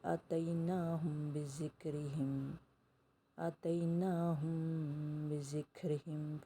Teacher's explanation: میم ساکن کے بعد با آیا ہے، اخفا شفوی، یہاں پر اخفا کریں گے